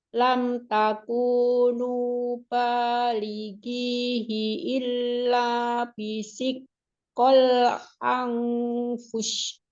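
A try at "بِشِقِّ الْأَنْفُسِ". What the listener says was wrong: Oh, kalau yang ini nggak dimaafin deh. Kenapa? Karena jadi bisik ko. Harusnya Pakai catatan huruf sinnya belum dapat.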